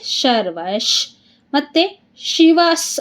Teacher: ಯಂದ್ರೆ ವದ ಮುಂದೆ ವಿಸರ್ಗ ಇದೆ ಶ ಅದಕ್ಕೆ ನಮಗೆ ಏನಾಗುತ್ತೆ ಅರ್ಧಶ ಆಗುತ್ತೆ ವಿಸರ್ಗದ ಮುಂದೆ ಶ ಇ ಇದೆ ಅದಕ್ಕೆ ಶರ್ವಶ್